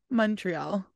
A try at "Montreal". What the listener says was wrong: That was like M-U-N. Montreal.